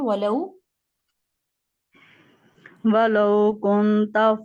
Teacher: ولو، واو کے لیے ہونٹ گول، کنتا، کاف کے اوپر پیش ہونٹ گول ہوں گے